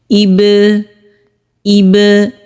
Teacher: با ساکن ہو تو اس کی آواز بھی پلٹ کر آتی ہے تو اس کو کلکلا کہتے ہیں۔